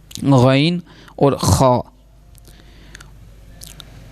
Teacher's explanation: غین اور خا، یہ ہے حلق کے اوپر والے حصے سے ادا ہوگا